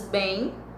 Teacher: Nos ditongos nasais, em, an, a semivogal não aparece escrita, é o que acontece, por exemplo, com palavras bem, que o M tem som de I, você não pronuncia o M, pronuncia o I.